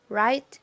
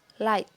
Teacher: If you want to make R sound, your tongue is up but it's toward the back of the mouth. For L sound, the tongue is curled up and placed on the ridge behind the front teeth. So you should have the tip of your tongue touching that ridge.